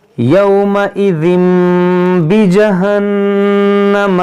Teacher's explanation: یہاں تنوین کے بعد با ہے تو اقلاب ہوگا